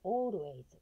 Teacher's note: Always、O▁のところにアクセントがいきます。